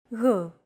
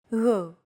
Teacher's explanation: It's like a very soft, continuous, and loosely held G, almost as if you're gargling, but don't make it sound too throaty. Γ. There's no such sound in English, but most people would transcribe this using the letter G, because that's the closest equivalent in English.